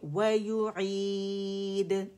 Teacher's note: و یو عید، again یا ضمہ کے ساتھ ادا ہوگی، اور یہ والی یا جو ہے یہ ہماری الجوف سے ادا ہو رہی ہے